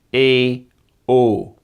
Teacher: In Belgium, they're more likely to be long monophthongs, ee, oo.